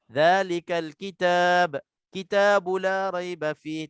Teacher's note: Sebab alif lam ni, hamzah wasal ni, dia tak dibaca, dia gugur waktu kita wasal.